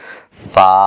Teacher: اوپر کے دانت نیچے کے ہونٹوں کے ساتھ لگ رہے ہیں، اور 1 الف کی مقدار اس حرف کو لمبا کیا جا رہا ہے